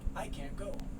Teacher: this t sound is often not made